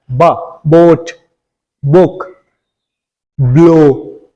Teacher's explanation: बाई labial, दोनों होंठों को मिला के बोला जाता है। ब, बोट, बुक, ब्लो।